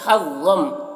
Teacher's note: ضا کو پر پڑھیں گے، حروف مستعلیہ میں سے ہے